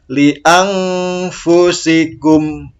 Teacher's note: Nah, dengungnya dikit aja. Li anfusikum. Ditahan 2 harokat.